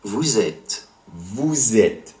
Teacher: the liaison, occurs between it and vous, you formal / plural, giving the S of vous, you formal / plural, a Z sound